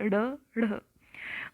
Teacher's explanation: इन ध्वनियों के उच्चारण में जिवा तालू के किसी भाग को झटके से मारकर हट जाती है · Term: उत्क्षिप्त